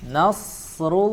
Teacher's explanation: huruf ro harokat dhammah kita baca dengan sifat tebal